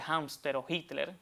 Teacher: en el caso de Hámster o Hitler, que ahí sí la aspiramos